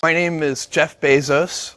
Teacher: both syllables in his own pronunciation are both diphthongs, A-O. And now some British accents are taking both of those diphthongs and turning them both into monophthongs, E-A.